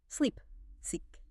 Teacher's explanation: Your mouth actually has to widen into a physical smile. Your lips pull back, the muscles tense, and the sound stretches out like an elastic band. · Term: long e sound